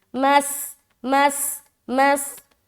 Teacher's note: جیسے ہی میم سین کی مخرج کو لگے گا سیٹی ظاہر ہوگی